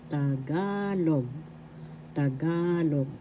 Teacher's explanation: The second syllable ga has the accent, so you pronounce this Tagalog.